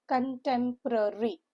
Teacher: Stress is on the second syllable. C makes the k sound.